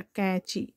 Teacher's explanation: नाक के बल बोलते हैं ना, तो ये बिंदी लग जाती है, कैंची, चा में बड़ी की मात्रा, कैंची।